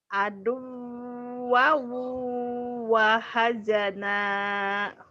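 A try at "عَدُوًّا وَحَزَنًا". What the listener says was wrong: Bagus tapi kurang cepet tuh ya. Deh cepetin. Aduh, wow, wahazana. Aduh, wow, wahazana.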